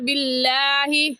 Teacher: لفظ اللہ سے پہلے زیر آ گیا تو لفظ اللہ باریک، اور باریک کرنے کا طریقہ کہ آپ کے دونوں ہونٹ پھیل جائیں